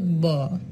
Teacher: ব হচ্ছে ঘোষ অল্পপ্রাণ উষ্ঠ ব্যঞ্জন ধ্বনি।